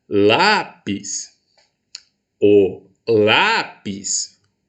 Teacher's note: em qual sílaba eu entreguei maior potência vocal em lá olha só ela é a penúltima